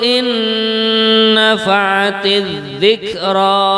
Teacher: nah itu nunnya mendengung, nah, non mati ketemu dengan nun.